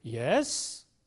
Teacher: a tone which is known as a rising tone where the pitch starts from a low level and goes to a relatively higher level